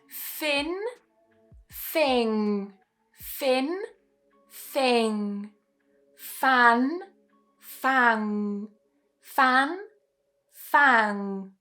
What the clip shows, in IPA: n and ŋ